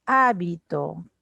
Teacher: en hábito el acento está en la antepenúltima sílaba esdrújula